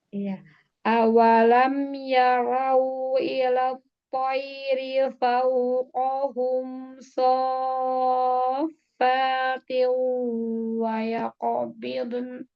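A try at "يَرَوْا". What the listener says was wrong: Ya, ya ro tebalkan ro-nya, terus itu monyong, linnya ya.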